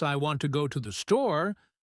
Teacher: the words want, go, and store are stressed because they carry the main meaning. That's why it's important not to pronounce every word with the same emphasis.